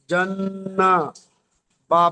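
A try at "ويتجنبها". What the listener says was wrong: নুনটা একটু টান হয়ে গেল, টান হবে না। জান্নাবু। নুন টান হবে না, জাবার জের হারাকাত টান হয় না।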